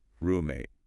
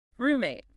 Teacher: And the stress, the louder part, is on the first syllable, room.